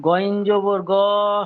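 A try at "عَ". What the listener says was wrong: এটা সব আইন আছে। জি নোক্তা থাকলে গইন হবে।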